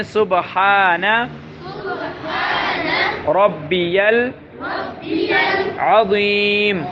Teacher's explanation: سبحان کو با میں قلقلہ کرنا ہے، صب ہا کو گلے کے درمیان سے ادا کرنا ہے، را کو موٹا کرنا ہے، اور عین عظیم کی عین کو آپ نے صحیح پڑھنا ہے، عظیم، اور وا کو موٹا کرنا ہے۔